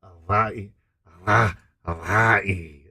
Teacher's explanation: Glottal between the vi and e.